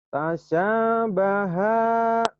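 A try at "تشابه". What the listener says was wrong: Shinnya nggak keluar tuh.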